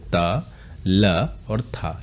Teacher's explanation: तो ता, था और ला आप अगर बोलेंगे तो जीभ से आपके जो है जीभ का स्पर्श दांतों से होता है, जैसे त, ल और था।